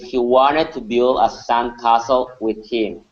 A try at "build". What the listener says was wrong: Instead of saying build and using a long E sound, B, we want to say B, build. Yeah, so the U it does not exist or is silent here, and the L is silent. We're going to focus on a short I sound. So instead of saying build, build.